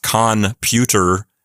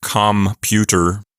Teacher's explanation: The N turns into an M because it wants to match the labial quality of the letter P.